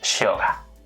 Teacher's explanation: In Spanish it will sound close to the y. This sound in other countries like Argentina is a little different, it would sound more like / sh /